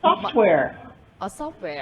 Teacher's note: Stress on the first syllable, right? On the first element of the compound.